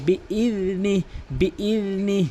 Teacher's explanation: জিহ্বার আগা থেকে, জিহ্বার আগা দাঁতের আগা, সামনে দুই দাঁতের আগা